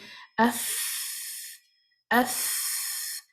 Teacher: For example, if you say af, af, you can see, you can hear, you can feel a lot of breath is coming out when you're saying the letter fa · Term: hums